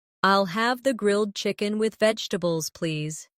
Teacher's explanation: Pay attention to the rhythm. The main stress is on grilled chicken and vegetables.